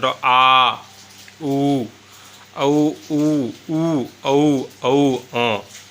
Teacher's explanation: जिन स्वरों के उच्चारण में जीभ के पीछे के भाग में सक्रिय होता है वे पर्श स्वर कहलाते हैं